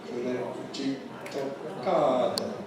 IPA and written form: kɯɾeʤitto kaado (クレジットカード)